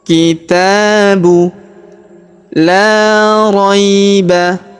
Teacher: Perhatikan huruf la kita panjangkan 2 harokat karena terdapat alif di depannya